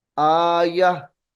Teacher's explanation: आयतुन वक्त की हालत में आया पढ़ा जाएगा।